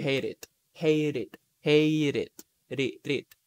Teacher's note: when it is followed by a vowel the sound is released so you can connect them